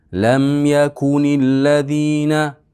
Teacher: Lam bu yerda lamda qalqala yo'q.